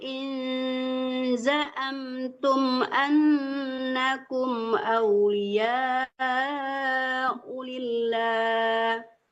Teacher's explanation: jangan tekankan nun tapi disamakan ke zai